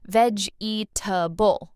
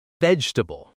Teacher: Learners often say veg-e-ta-ble, all four parts, but native speakers say vegetable, shorter, smoother.